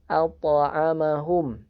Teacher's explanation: Kecuali ada beberapa huruf yang memang seperti dihentikan atau diputus suaranya. Dan untuk huruf qalqalah ini suaranya dialirkan, jadi mengalir, suaranya mengalir dan dipantulkan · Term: qalqalah sugro